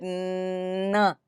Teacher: are blocking the airflow in English at the alveolar Ridge however you can continue to say the sound and air is Flowing out through your nose · then an air continues to escape through the nose and but in the oral cavity there is blockage a total blockage of the airflow at the alveolar Ridge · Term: nasal